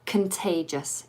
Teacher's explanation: that first syllable, the con, becomes the weak syllable, and that o becomes a schwa